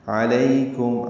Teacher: لو واو مدہ ہے، 2 حرکات لمبا کریں گے، ہونٹوں کو نہ تمام گول کریں گے. علیکم، عین وسط حلق سے ادا کریں گے. لئی معروف طریقے سے پڑھیں گے، لیکم نہیں پڑھیں گے.